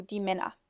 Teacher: the er, when spoken, kind of sounds more like an a than an actual er. So it's not er, but kind of more like Männer, not Männer, Männer.